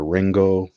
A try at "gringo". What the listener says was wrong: Gringo. Gringo starts with a G. Gringo.